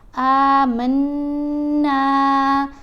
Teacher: آواز ناک میں پڑھی جاتی ہے اور ایک الف کی مقدار جتنا ٹھہر کر پڑھتے ہیں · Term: غنہ